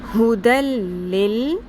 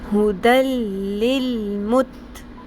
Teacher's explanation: نون ساکن، جو تنوین کی نون ساکن کی آواز ہے اس کو بیچ میں نہیں ادا کرنا. ٹھیک ہے، ڈائریکٹ اگلے لام اور را کے ساتھ ہم نے جوڑ دینا ہے